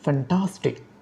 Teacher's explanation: For example, the word ফ্যান্টাস্টিক, the primary stress on the middle syllable টাস। অর্থাৎ ফ্যান্টাস্টিক শব্দে মাঝখানের যে সিলেবল রয়েছে টাস, এটি হচ্ছে প্রাইমারি স্ট্রেস। · সুতরাং ফ্যান্টাস্টিক শব্দে ফ্যান হচ্ছে সেকেন্ডারি স্ট্রেস, টাস হচ্ছে প্রাইমারি স্ট্রেস।